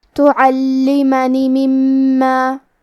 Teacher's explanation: کلمت تعلمنی میں لام پہ تشدید ہے تو ہمیں 2 حرف کے برابر لام کو پڑھنا ہے. آخری میں کیونکہ نون کے نیچے زیر ہے لہذا ہمیں نون کو صرف زیر سے پڑھنا ہے. · کلمت مما میں میم کی تشدید کو ظاہر کریں گے